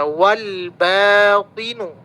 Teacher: Kalau alif lam bertemu dengan ba karena ba itu adalah huruf qamariah maka lamnya terbaca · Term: qamariyah